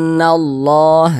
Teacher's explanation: Hukumnya gunnah musyaddadah. Maka cara membacanya ditahan ya, kita panjangkan sejenak karena dia didengungkan. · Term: ghunah musyaddadah